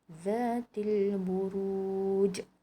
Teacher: Ada lantunan yang kuat dekat sini sebab huruf jim ini berada di akhir kalimah dan ia merupakan qalqalah kubra.